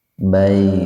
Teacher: Huruf ya didahului fathah, jadi dibacanya panjang tapi sedikit aja panjangnya karena di tengah-tengah kata. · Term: mad lain